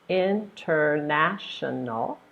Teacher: we can first of all think of the syllables International so there's five syllables that's a long word International and the stress goes on your third syllable